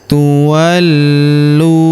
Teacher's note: Huruf lu kita tahan dan tekan karena terdapat tanda tasdid di atasnya. Tuwallu. Lalu huruf lu kita panjangkan dua harakat karena wau sukun di depannya.